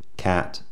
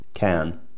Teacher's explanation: an example would be that in many dialects of American English the a phon will have a slight Glide in it when it comes before certain nasal consonants